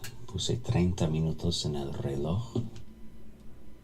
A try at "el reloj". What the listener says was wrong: Like, where's that r sound when, like, Arabic has that too, although he seems to, like, not distinguish between r and r, and r, like you said el reloj, and it's like, you know, el reloj.